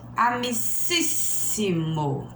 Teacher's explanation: depois da sílaba forte ainda tem mais duas para frente. Então, ela está na terceira para trás. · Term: proparoxítona